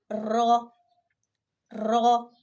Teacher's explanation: زبان کے کنارے جب اوپر والے 4 دانتوں کے مسوڑوں سے لگتے ہیں اور اس میں زبان کے پچھلے پشت کو بھی تھوڑا سا دخل ہوتا ہے تو اس سے ایک حرف را ادا ہوتا ہے۔